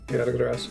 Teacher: Usually when I see words that end in SU, it sounds like the U at the end is read so fast as to be practically skipped over